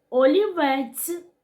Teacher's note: звук ць М'який приголосний і стоїть він у кінці слова